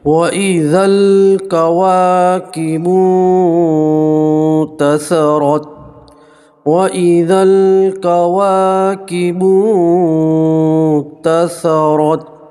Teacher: نون ساکن کی آواز کو آپ ناک میں چھپا کر گنہ کے ساتھ پڑھیں گے